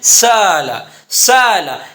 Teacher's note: لہذا حمزہ کو حمزہ اور الف کے درمیان ادا کرنے کو ہم کہیں گے بین بین قریب کر کے پڑھنا۔ جیسے سألا سے سالا، سالا، اس کو نہ سالا پڑھیں اور نہ سالا پڑھیں، درمیان میں کر کے پڑھیں سالا، تو اس کو کہتے ہیں تخفیف قریب، ٹھیک ہے۔